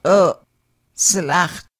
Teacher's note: Glottal L pronounced as an abruptly stopped L